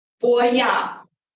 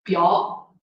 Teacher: And this is for the contrast between the non-palatalization, the non-palatalized bilabial plosive and the palatalized one